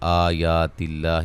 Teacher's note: لفظ اللہ کے لام کو باریک پڑھیں گے